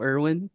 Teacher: she pronounced my name as if it had like a W in between the E and the R.